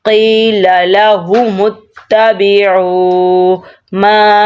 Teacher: قی قاف موٹا قلقلے والا ہے، اس کو ہم نے موٹا ادا کرنا ہے، 2 نقطوں والا قاف ہے، موٹا ہے۔